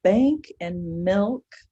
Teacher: those would technically be called short vowels, especially milk. Bank, it's nasalized. So, but there's a consonant between the short vowel and the k sound.